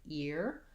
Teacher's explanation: i have no doubt about how to pronounce it that it's got that e tense e sound